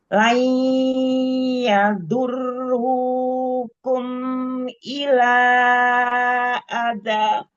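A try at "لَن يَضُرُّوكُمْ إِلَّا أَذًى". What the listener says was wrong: Jangan terlalu panjang matobi'inya. Terus idhar syafawi, mim sukunnya jangan ditambah gunahnya. Jangan dipanjangkan lagi gunahnya.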